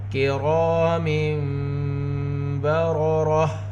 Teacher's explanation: من بین الصلب کرام بررہ، را میں الف مدہ، الف سے پہلے زبر، را کی آواز کو دو حرکت کے برابر کھینچ کر پڑھیں گے